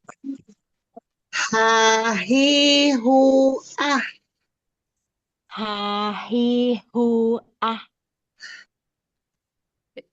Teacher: dia punya sifat hames atau mengeluarkan angin